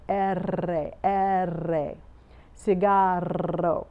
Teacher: So, and the R, which we talked about, R is the tip of your tongue, does not go to the roof of your mouth, R, unless, and if you're trilling it, going R, your tongue not only is hitting the tip, top of your mouth, it is vibrating back and forth